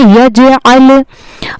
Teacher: आइन का मखज हलफ का दरमियानी हिस्सा होता है।